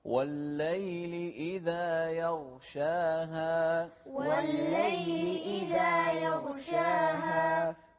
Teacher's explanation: لا تقلقل الغين، يغشاها غلط